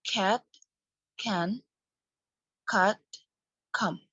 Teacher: the vowels occur in words immediately before a neighboring nasal consonant they appear to borrow the nasal feature of the following consonant